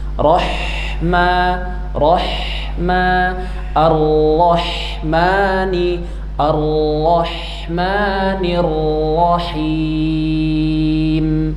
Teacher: Apalagi kalau ha-nya sukun, maka sifat hamesnya lebih terasa. Hames dan juga rakhawah mengalir